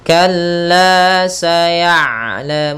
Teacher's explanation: ain sifat bainiyahnya tengah-tengah, yaitu tidak terlalu dialirkan suaranya dan tidak pula terlalu ditahan suaranya, maka tengah-tengah.